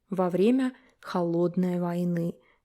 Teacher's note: Во время. And we merge it together, it sounds во время. Vowel reduction here.